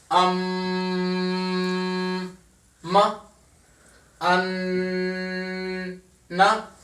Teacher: गुन्ना कहते हैं जी मुकम्मल आवाज को नाक में लेकर जाना, सारी आवाज को। देखिए म, अन, ना, मुंह बंद करके पढ़ेंगे, ऑटोमेटिकली सारी आवाज नोज में चली जाएगी और उसको कहते हैं कंप्लीट आवाज को नोज में लेकर जाने को गुन्ना कहते हैं।